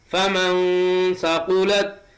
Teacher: فمن ثقلت، نون ساکن کے بعد سا حروف اخفا میں سے آیا ہوا ہے، اس لیے یہاں بھی قاعدہ اخفاء حقیقی کا ہوگا۔ فمن ثقلت، نون کی آواز کو ناک کے بانسے میں ایک الف کے برابر چھپا کر پڑھیں گے